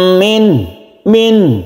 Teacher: jangan digunahkan atau jangan didengungkan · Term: izhar